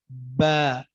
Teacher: جب دونوں حصوں کے تری والے حصے مل جائیں آپس میں، دونوں ہونٹوں کے تری والے حصے مل جائیں، با ادا ہوگا